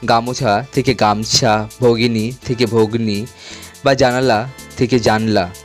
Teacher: তেমনি মধ্য স্বরলোপ, যেমন গামোছা থেকে গামছা, ভগিনী থেকে ভগ্নী বা জানালা থেকে জানলা, এইসব শব্দের মধ্যস্থিত স্বরধ্বনিগুলি লোপ পেয়েছে